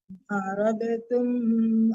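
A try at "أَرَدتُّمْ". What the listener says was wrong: Aradtum nggak boleh dikalah-kalahkan dalnya kalau di depannya ta ya, karena dia masih satu mufradnya hampir sama ya. Aradtum langsung kita. Kok dikalah-kalahkan juga? Jangan aradatum, nggak boleh dikalah-kalahkan dalnya kalau di depannya ta. Aradtum langsung ditekan ke ta. Ibu kan arad, jangan rada. Arad ditekan ke ta, nggak ada kalah-kalah dalnya ya. Ibu kan bacanya aradatum, jangan aradatum, aradtum.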